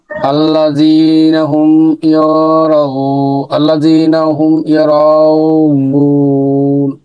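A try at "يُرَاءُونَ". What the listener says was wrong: এটা কিন্তু পেশ, ইউর, আল্লাযীনা হুম ইউর, ইউর, এখানে চার আলিফ হবে না। আল্লাযীনা হুম ইউর, ইউর, এই রর উপর জবর থাকলে কিন্তু র হবে, রা হবে না।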